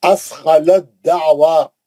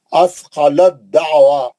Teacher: अब ता नहीं पढ़ेंगे, दाल में चले जाएंगे सीधा